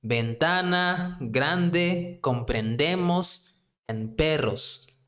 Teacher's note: the stress is going to be on the second to last one